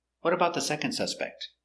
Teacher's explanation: the question word is important we stress what and second second is an adjective we stress adjectives what about the second